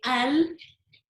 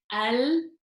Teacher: the fronted edge of your tongue is touching the gums of the upper front teeth from canine to canine. What does that mean? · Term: lam